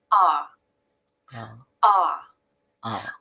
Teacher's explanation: the tongue is low in the mouth and this is key there is a little bit of tension in the back of the tongue as you say ah I can feel the back of my tongue tense up ah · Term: the ah vowel